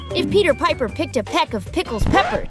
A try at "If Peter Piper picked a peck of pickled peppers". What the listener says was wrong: You said pickles?